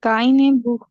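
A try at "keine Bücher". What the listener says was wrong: ब्यूशा। बुख हमने कहा था जब ऊ आता है, बुख, बट अभी यहाँ ऊ उमलाउट है, ब्यूशा।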